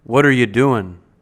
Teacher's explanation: the pronoun you can be reduced to yeah · And if you want to reduce this question even more, the pronoun you can be reduced to ya